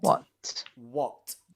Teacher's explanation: That's because this is a very particular pronunciation. It's one of the only words in English where the letter A is pronounced as an O, as in on or top, okay? As like an O sound, the IPA O.